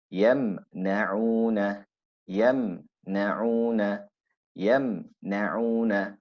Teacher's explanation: So you can see it's not heavy, but it's also not extremely light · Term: intermediate